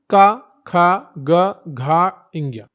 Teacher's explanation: क वर्ग, कंठ, गला से उच्चारण होता है।